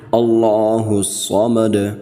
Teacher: ویسے تو لفظ اللہ الصمد، مدو دال کے اوپر پیش ہے، تو وقف کی صورت میں ہم دال کو ساکن کر رہے ہیں، ایسے پڑھیں گے اللہ الصمد، دال پر قلقلہ بھی کریں گے۔